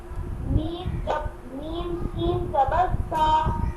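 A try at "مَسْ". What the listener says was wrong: No, sin. This is a jazm. This is a sukun. Meme, sin, zabar mas.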